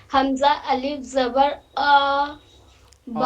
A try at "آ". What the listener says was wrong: اور کھینچ نہیں، منہ کو کھولنا ہے، نہیں پورا منہ کھولیے. منہ جیسے کھول دیجیے گا پورا اپنے آپ حروف مد ادا ہو جائے گا.